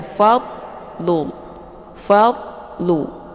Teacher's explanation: cara bacanya dialirkan tidak boleh dilepas sehingga terbentuk suara yang memantul jangan Fadlu Ini kebanyakan orang bacaan dad ini keliru jadi dadnya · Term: dad sukun